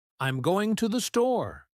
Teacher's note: for statements, we use a falling intonation